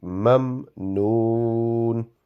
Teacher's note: the meme which has a jazm, the sound should not be prolonged. It will only be mamnoon.